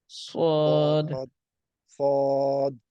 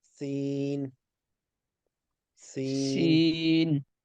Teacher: سواد تھوڑا بھاری ہوگا اور سین تھوڑا پتلا ہوگا